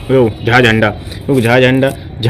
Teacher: झ जो है व महाप्राण भी है ठीक है और घोष भी है